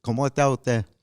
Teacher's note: in the Bronx, they don't pronounce their S's